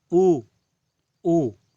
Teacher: जैसे हम कहते हैं ऊ ऊ, तो हमारे जो होंठ है बिल्कुल गोलाकार हो जाते हैं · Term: पूर्ण वृत्ताकार